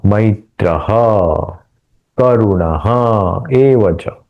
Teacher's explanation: विसर्ग जो है वो ए आने के कारण एक स्वर है इसलिए वहां का विसर्ग लोप हुआ मतलब अदृष्ट लोप मतलब दिख नहीं रहा है वहां पे एवच निर्ममः निरहंकार विसर्ग का ओकार हुआ क्योंकि यहां नी आया है।